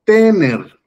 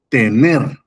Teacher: Entonces, la sílaba tónica es ner en este caso.